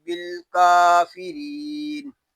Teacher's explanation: کاف کو ایک الف تک کھینچ کر پڑھیں گے کیونکہ یہاں کھڑا زبر ہے. را باریک ہے. را باریک اس لیے ہے کہ را کے نیچے زیر آ گیا ہے. یہاں یا مدہ ہو رہا ہے.